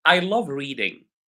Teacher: My voice becomes quieter and quieter. it becomes lower and lower as I read a question.